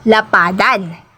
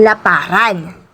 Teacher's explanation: naman ng ang d ay nasa posisyong Penal ng salitang nilalapian Kung ito ang hinuhulapian ng an o in ang d ay karaniwang nagiging R